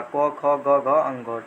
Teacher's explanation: को खो में जितने भी वर्ण हैं वो सभी कंठ से। को खो में मतलब केवल क वर्ग का, को खो ग घ अंघो।